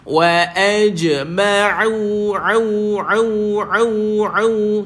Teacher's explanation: Sebab ni tuan-tuan, ramai orang pergi ain ni dia pergi kat hidung. Ain bukan hidung. Ain dekat tengah kerongkong.